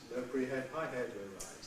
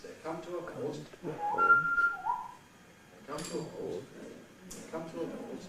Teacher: Low pre-head, high head, low rise.